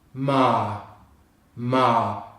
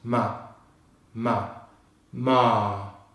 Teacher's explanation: we don't pronounce the letter R instead we extend the pitch on the vowel sound. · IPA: /ɑː/